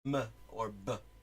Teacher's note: when you form an m and you form a b in both cases there is a bilabial thing going on